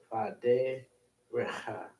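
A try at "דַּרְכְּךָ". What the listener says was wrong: No, there's no ha. So it says ech, but derech.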